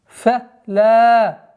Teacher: Долгота в размере двух огласовок фатха над буквой лам.